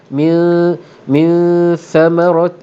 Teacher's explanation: Nun mati bertemu dengan sa, hukumnya ikhfa hakiki, didengungkan dengan 2 harakat. Bunyinya bercampur dengan bunyi sa.